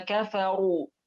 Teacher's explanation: Ru di sini ra-nya berharakat dhammah, maka dibaca tafkhim.